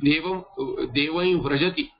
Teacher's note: So if you say something like that, then va will become nasalized vakara